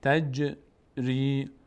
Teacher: جیم هم مثل دال مقداری در مخرجش میلرزه تجری عد [موسیقی] ج نون اینجا دوباره ساکن مخفی شده چون